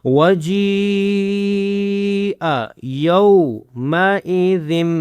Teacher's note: ذم کرنا ہے, ذن نہیں کرنا کیونکہ اب دیکھیں دو زبر کے بعد کیا آ رہا ہے, یہ چھوٹا سا میم آ رہا ہے تو ذم آخر میں میم کی آواز نکالنی ہے.